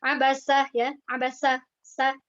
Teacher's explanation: Nah, kemudian huruf sa ya. Ini adalah hurufnya bersifat sofir ya, tipis dan ada desis.